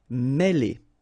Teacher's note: Mêler, okay, remember, accent circonflexe here on the top of E, and it will give you the sound E, really open, okay? Mêler.